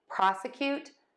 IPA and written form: ˈprɑsəˌkjut (PROSECUTE)